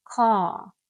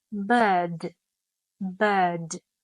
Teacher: this R is often silent unless it is followed by a vowel